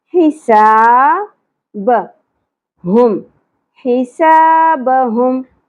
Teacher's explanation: حا وسط حلق سے، سا سین سیٹی کے ساتھ الف حرف مدہ ایک الف کے برابر کھینچیں گے